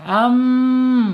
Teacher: Kemudian sifat yang lainnya yaitu alkisyum. Alkisyum itu alirannya melalui rongga hidung ya